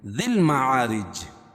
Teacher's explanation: دال کو جب ہم لام میں ملائیں گے تو یہ یا نہیں پڑھی جائے گی